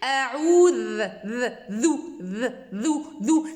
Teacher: C'est comme s'il y a une vibration au niveau de taraf al-lisan, du bout de la langue, avec les bords des incisives supérieures. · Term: le dhal